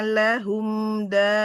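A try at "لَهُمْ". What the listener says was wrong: Nah, di lahumnya enggak lehum, lahum.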